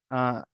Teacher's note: তো হালাকের একদম শুরু থেকে, শুরু মানে নিচের তল থেকে একদম হাত দিয়ে দেখেন ওখানে হামজা হা, এখন উচ্চারণ হচ্ছে, আওয়াজটা পুরো গলার শেষ ভাগে ঠেকে যাচ্ছে।